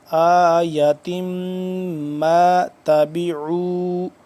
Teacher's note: तनवीन है और आगे मीम मुशदिद है तो इसको हम गुना करेंगे